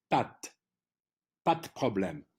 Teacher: the P of problem is a strong consonant in French. It's not exploded like in English. So in order to sound it properly, you have to imagine that the D is a T at the end of pa.